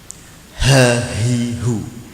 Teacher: makhraj ha ini adalah tenggorokan bagian bawah